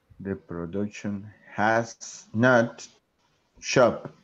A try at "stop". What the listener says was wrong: Now the verb is stop, not shop. Stop.